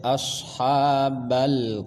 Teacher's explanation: makhraj posisi huruf ha di tengah tenggorokan